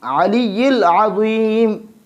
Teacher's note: جو عین ہے اس کو ہم نرمی کے ساتھ پڑھیں گے، حلق کے درمیانی حصہ سے ادا کریں گے